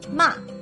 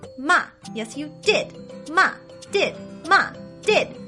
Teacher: this tone goes straight down quickly like an exclamation or someone who is very angry which is why i went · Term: fourth tone